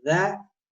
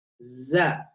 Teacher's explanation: दाल नरम और बारीक है, दाल नरम और बारीक है। जा सख्त सीटी वाली और बारीक है।